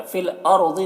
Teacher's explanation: फिल अर्ज़ि रॉ को पुर पढ़ेंगे, ज़ाद को भी पुर पढ़ेंगे।